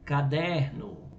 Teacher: a penúltima sílaba é a tônica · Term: paroxítonas